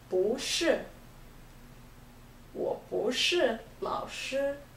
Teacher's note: 不 being put before 是 changes to second tone